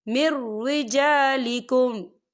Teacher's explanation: یہاں دیکھیں مر، یہاں نون ساکن ہے اور نون ساکن کے بعد جو ہے را آ رہا ہے، اور را جو ہے حروف یرملون میں سے ہے، تو یہاں پر ادغام ہوگا اور ہم اسے بنا غننے کے پڑھیں گے